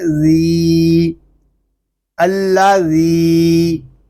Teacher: حمزہ لام زبر ال، لام زبر لا، اللہ، ذال یا زیر ذی، اللہ ذی۔ ذال کو ہم ایک الف تک کھینچ کر پڑھیں گے کیونکہ یہاں یا مدہ ہو رہا ہے